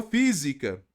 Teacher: Professor então proparoxítonas independente da terminação olha só a palavra Física não é a última mais forte nem a penúltima é a anti penúltima